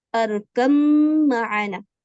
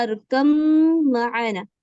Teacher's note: یہ روایت حفص میں اسی طریقے سے پڑھایا جاتا ہے، ارکم معانا. تو یہاں پہ یہ با پورا کا پورا مدغم ہو چکا ہے میم میں، یعنی اب با کی کوئی آواز نہیں آئے گی